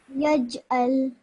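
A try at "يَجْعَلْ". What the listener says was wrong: Excellent, well done.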